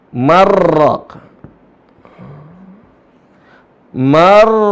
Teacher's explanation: Kalau ada nun mati bertemu dengan ro dibaca marraq. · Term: idgham